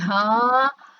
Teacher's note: bunyi h, tidak ada pergerakan, tidak ada hambatan sama sekali.